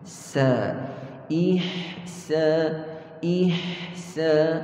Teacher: Biwalidayhi ih, ih, ha. Dan pada ha itu ada sifat kita panggil rakhawah. Perlu kita beri tempoh yang sempurna sebelum pindah kepada sin.